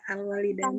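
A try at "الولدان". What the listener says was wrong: Dan bacanya jangan alwalidani, alwaladani. Karena nggak berubah. Kana itu merofakkan isim. Ketika kana kita masukkan, al-waladani isimnya. Karena isimnya, maka alif harus bertahan, nggak boleh dirubah menjadi ya.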